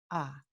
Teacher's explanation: la vocal A se considera una vocal baja porque la lengua tiene que bajar